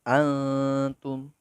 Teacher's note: nun mati yang dibaca samar atau ikhfa